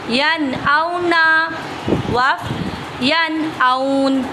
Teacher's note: اور واو لین کو بغیر کھینچے بغیر جھٹکا دیے نرمی سے معروف پڑھتے ہیں